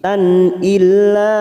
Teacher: tak marbutoh yang berharokat fathah tanwin yang bertemu hamzah kita baca jelas tanpa mendengung, bacaan idhar halqi